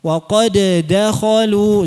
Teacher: Jika diizharkan dal pertamanya tetap ada qalqalah.